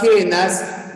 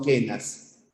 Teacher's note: En la palabra quenas no hay nada, ¿no? Porque la U no suena. No decimos cuenas, sino quenas.